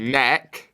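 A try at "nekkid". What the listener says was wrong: But it's together. One word.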